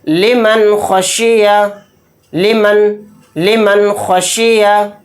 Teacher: خا حروف حلقی کے 6 حروف میں سے ایک حرف ہے، تو یہاں پر بھی اظہار کا قاعدہ ہوگا۔ اس نون کی وائس کو جلد پڑھنا ہے، ظاہر کر کے پڑھنا ہے، اس میں غنہ نہیں کرنا